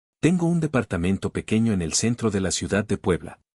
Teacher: Every T and every D should be on the teeth.